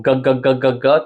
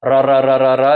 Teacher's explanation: G, we go g, that's in the back of our throat. Ra, ra, ra, ra, ra is in the front. That might be easier.